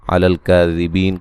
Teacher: کاف کو باریک پڑھیں گے، مد اصلی ہے. بی یا مدہ ہے، وقفاً بڑی مد کے ساتھ پڑھ سکتے ہیں.